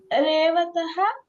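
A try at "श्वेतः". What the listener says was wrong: ರೇವತಃ ಅಲ್ಲ, ಶ್ವೇತಃ. ಅದು ಶ ಹಾಫ್. ರೇವತಃ ಅಲ್ಲಮ್ಮ, ಅದು ಶ್ವೇತಃ. ಶ ಹಾಫ್ ಶ ಇದೆ.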